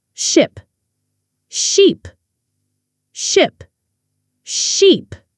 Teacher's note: Ship has a short sound, like in hit or sit. Sheep has a long sound, E, like in see or tree.